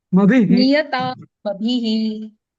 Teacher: तो सी आणि भी थोडं दीर्घ म्हटलं, थोडं ह्रस्व पाहिजे. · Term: ऱ्हस्व